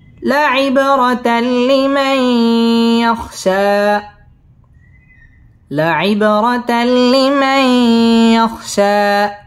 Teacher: ইয়াখশা মধ্যে তবাই এক আলিফ টেনে পড়তে হবে